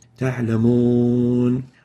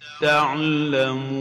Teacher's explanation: not pursing the lips enough when pronouncing the waw, so it sounds or ends up sounding like the English O